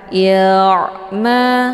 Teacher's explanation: ain ini adalah sifatnya tawasud, cara bacanya dialirkan